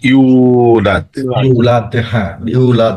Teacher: এই প্রত্যেকটা আমাদের আয়াতের শেষে কিন্তু আপনার ধাক্কা হবে, মানে কলকলা হবে। দেখেন প্রত্যেকটাতে আমাদের দাল আছে, দাল, এখানেও দাল, এখানেও দাল, এখানেও দাল, এবং এখানে কোনো মাদে আরজি নাই না।